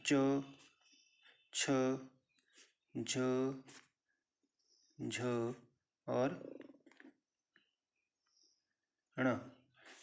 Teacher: चवर्ग जो कि तालु की सहायता से बोले जाते हैं